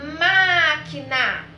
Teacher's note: qual foi a sílaba mais forte foi a sílaba ma ou seja a antepenúltima sílaba então ela é uma proparoxítona lembrando de uma regrinha pessoal toda